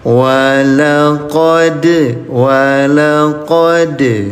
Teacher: Walaqad fatanna Sulaiman dal dalam keadaan mati atau dalam keadaan sukun. Qalqalah pantulkan ya